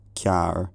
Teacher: The other feature in this word, cearr, is a palatalized k sound. K is normally pronounced with the body of the tongue drawn back to the soft palate near the throat.